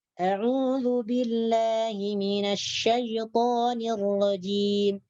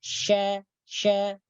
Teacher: Jadi sifatnya shin adalah at-tafashi, berhamburan. Ketika diucapkan udara berhamburan di mulut. Berhamburan atau bertebar.